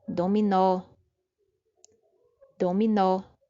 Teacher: Perceba que a última sílaba é pronunciada com mais força. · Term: oxítona